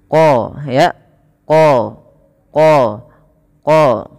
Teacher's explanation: pangkal lidah kita angkat, dia menebal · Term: huruf yang tebal